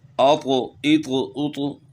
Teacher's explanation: طا کو موٹا کرنا ہے اور قلقلہ بھی کرنا ہے